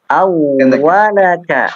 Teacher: Jadi tidak dipanjangkan di huruf lamnya